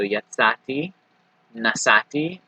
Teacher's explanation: when you're adding a suffix onto the end of one of these words, you don't hear the aleph or ayin, right? So yatsati, nasati, those are going to sound very similar.